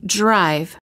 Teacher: when the D is followed by an R the D changes and becomes an almost j